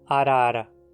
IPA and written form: aɾaɾa (arara)